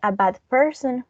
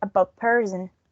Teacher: it's followed by a p we or i mean or um the d it's going to change into b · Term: assimilation